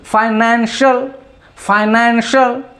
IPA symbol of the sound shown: ʃ